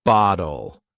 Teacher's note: Imagine someone says, "Could you pass me the bottle of water, please?" How does that sound? The way softens the T in bottle to almost sound like a D